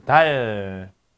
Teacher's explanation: 여기서 디귿이 바로 무성, 치경 무성 파열음이죠